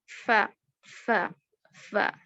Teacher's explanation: فا جو ہے وہ زبان دانتوں کے جو کنارے سامنے کے 2 دانت کے جو کنارے ہیں وہ نیچے کے ہونٹ کو لگیں گے. ف ف ف سمجھیے ف اف.